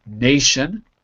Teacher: is the stress is always before the tion so you say nation stress on the first syllable because it's before the tion